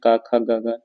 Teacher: क वर्ग के जितने भी हैं कंठ से बोले जाते हैं